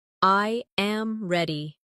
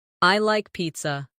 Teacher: The voice falls naturally at the end.